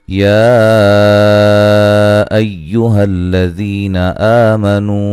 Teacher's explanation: اعوذ باللہ من الشیطان الرجیم یا ایہا الذین آمنوا اذا تداینتم بدین الى اجل مسمی، یہاں پہ جو مد ہے یہ مد جائز ہے، ٹھیک ہے، یا الگ تھا، ایوہا الگ تھا، ٹھیک ہے، مد جائز ہے، 3 سے 4 الف کے برابر آپ نے اس کو لمبا کرنا ہے